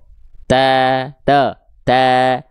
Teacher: Pangkal lidahnya di bawah, rongga mulutnya terbuka. Sehingga vokal A-nya bebas keluar dengan tipis.